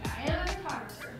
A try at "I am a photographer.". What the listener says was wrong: No, don't say it like an apology. Don't say that inflection.